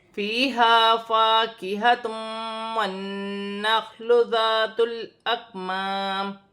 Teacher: دو پیش کی تنوین کے بعد واو مشدد آ رہی ہے تو دو پیش کی تنوین میں غنہ بھی ہوگا اور ادغام مال غنہ کا قاعدہ ہے یہاں پر، اور ملا کر بھی پڑھا جائے گا۔